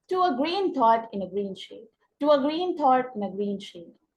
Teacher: ग्रीन थॉट और ग्रीन शेड पे हम स्ट्रेस दे करके पढ़ेंगे। टू अ ग्रीन थॉट इन अ ग्रीन शेड, टू अ ग्रीन थॉट इन अ ग्रीन शेड। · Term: spondic